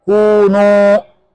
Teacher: Kemudian kunu ini dhamma, salahnya waw, salahnya dhamma lagi, salahnya waw, maka bibirnya harus monyong ke depan tanpa balik lagi